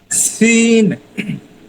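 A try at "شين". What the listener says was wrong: না, সিন যে শব্দটা আসে না, সি, এই শব্দটা কোনোভাবেই এটার মধ্যে আসবে না। ঠিক আছে, এটাকে এড়াই উচ্চারণ করতে হবে। শিন। শিন। শি। শি। শিন। তিন নুক্তাওয়ালা, শিন। এটা হ্যাঁ, এটা আপনার ট্রাই করতে হবে।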